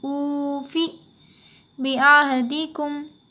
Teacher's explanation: یہاں پہ واو مدہ ہوگا، او تھوڑا کھینچیں گے، فی کو جلدی پڑھیں گے